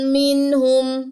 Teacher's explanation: میں نے یہاں پہ غنہ نہیں کیا، نون ساکن کے بعد ہا آیا ہے